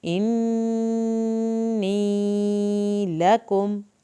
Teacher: नून की शत की वजह से हमने यहाँ पे देर लगाई है